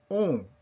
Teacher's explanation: My lips are protruded just like I were going to say ou or u, but I'm saying on